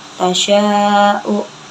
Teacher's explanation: Tasya'u itu mad wajib mutasil karena matobi'i bertemu dengan hamzah dalam satu kalimat. Cara bacanya panjang 6 harakat.